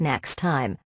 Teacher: when native speakers say next time, we do not say both T sounds. We drop the first one.